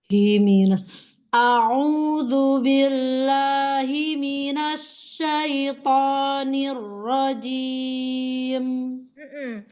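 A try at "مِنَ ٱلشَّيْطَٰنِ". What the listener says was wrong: Tapi masih terdengar himinas, ya. Jadi tafashinya itu seperti ada sya, coba. Sya, ash, gitu coba. Asyaitoni.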